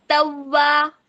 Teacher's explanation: वाव पे आपने होंठ को गोल करना है, लेकिन जैसे ही ज़बर अदा करेंगी तो आपने अपना मुंह थोड़ा सा खोलना है